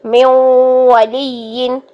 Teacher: ٹھیک، میو ولی نہیں کرنا، میو نہیں، میو. نون کی آواز 50% آنی چاہیے